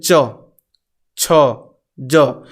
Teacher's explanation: देखिए पूरा आपका तालू में जिह्वा एकदम स्पर्श कर रहा है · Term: तालु वर्ड